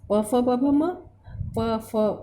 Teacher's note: यहाँ पे ओष्ठ का प्रयोग हो रहा है, यानी ओष्ठ में प फ यानी ओठ ऊपर नीचे हो रहे हैं, हमारे मिल रहे हैं, तो यहाँ पे उसका उच्चारण स्थान ओष्ठ है।